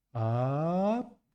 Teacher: Let's continue with the sound ah from low to high.